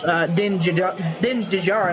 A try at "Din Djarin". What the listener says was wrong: The D in the last name is silent. Din Djarin.